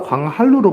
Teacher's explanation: 2번 광한루가 광한루로 발음되는 거 유음하죠. 자, 그래서 니은이 리을의 영향을 받아서 리을로 교체되는 현상